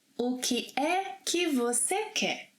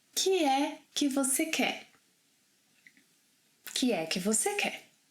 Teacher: first of all, o que can be reduced to que.